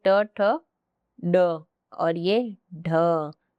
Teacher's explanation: जब आपकी जिह्वा हल्की सी घूमे यानी रोटेट ऐसे हो, ठीक है, तो वो होती है मूर्धा। दंत नहीं होगा, तालु बिल्कुल भी नहीं होगा, नासिक केवल मूर्धा।